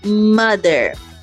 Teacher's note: Ela é produzida com os dois lábios se encostando. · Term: nasal bilabial